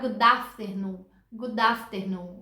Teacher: Como o D é uma consoante e o A do afternoon é uma vogal, dá para você juntar os dois e fazer uma palavra só.